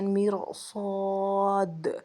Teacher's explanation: صفات عارضہ بالصفت کی تعریف: صفت عارضہ کا سبب صفت لازمہ ہو تو اسے صفت عارضہ بالصفت کہتے ہیں، جیسے حروف کا پر ہونا باوجہ استعلاء کے، مثلا مرصاد، اس مثال میں را کو پر پڑھنا صاد کی استعلاء کی وجہ سے ہے